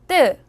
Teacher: 목에다 힘을 주고 드 소리를 내면 뜨 소리가납니다 도 드를 두 번 겹쳐서 써요 다시 한번 따라해 보세요 뜨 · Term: 된소리